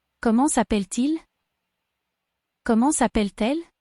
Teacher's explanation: ENT on the end of appel is silent. However, the T at the end of appel is heard because it's followed by a vowel.